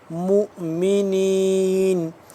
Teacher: پڑھیں گے یہ اوپر جو چھوٹا حمزہ نظر آ رہا ہے میم حمزہ پیش مؤمنین تھوڑا سا ہلکا سا جھٹکا لگائیں گے